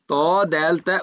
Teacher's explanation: জিহবার আগা সামনের উপরের দুই দাঁতের গোড়ার সাথে লাগিয়ে ত দ দে তা উচ্চারিত হয়